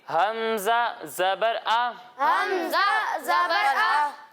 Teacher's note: जब हम हमज़ा की अदायगी करेंगे तो इसे हलक के निचले हिस्से से पढ़ेंगे।